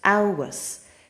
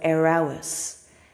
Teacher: there's a pregnant pause there at the beginning with the silent FH. You know that ABH sounds like ow, and you know that a broad S sounds like s.